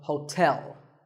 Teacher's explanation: there are two syllables ho and tell like the English word tell as in tell me the stress is on the second syllable